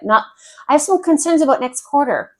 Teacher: That was fast. That was high. There's no pauses. It shows no importance.